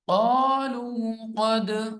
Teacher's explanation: یہاں پہ قلقلہ ہوگا دال پہ اور قاف بھی موٹا ہے